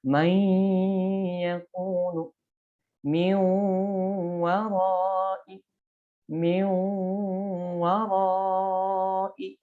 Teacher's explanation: Jadi harus ada merasakan getaran di rongga hidung